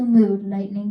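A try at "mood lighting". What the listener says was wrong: Mood lightning? You're saying mood lightning. I don't want any mood lightning.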